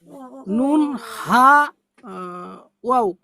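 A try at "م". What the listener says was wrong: নুন হাওয়াও নয়, মাঝখানেরটা ভুল বলছেন। মিম হবে, মিম।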